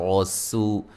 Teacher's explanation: सीन को बारीक सीटी से व मद्दा है, और रा को मोटा अदा करेंगे